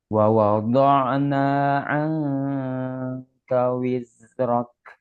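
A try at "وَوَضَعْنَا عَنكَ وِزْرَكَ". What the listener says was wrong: Nah, itu masih sin itu. Wiz, wiz, az, iz, wiz. Bukan sin ya.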